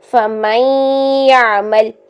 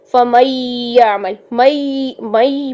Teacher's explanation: فَمَن يَعْمَلْ مَن یہ دیکھیں، نون کی آواز اور یا کی آواز یہ دونوں 50-50% ہونے چاہیے. ٹھیک ہے، ایسا نہیں ہے کہ نون کی آواز زیادہ ہو اور یا کی کم ہو، یا پھر یا کی آواز زیادہ ہو اور نون کی کم ہو. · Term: ادغام